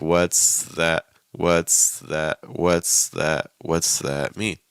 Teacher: We're really just going to transition the S to a TH.